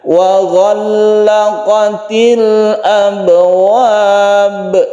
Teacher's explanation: ba yang di sini abwab ini disebut qalqalah kubra atau besar karena di akhir waqaf